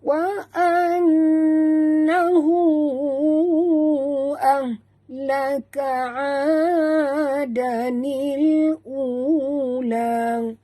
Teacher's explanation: nun bertasydid wajib dengung, wajib al-gunah, dengung 2 harakat.